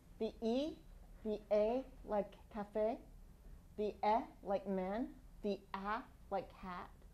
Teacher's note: you can see that these are all towards the front of the mouth